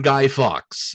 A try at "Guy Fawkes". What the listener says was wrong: Fawkes. Guy You said Fox. Enunciate.